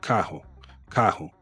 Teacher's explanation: the RR in the middle of a word is pronounced like an H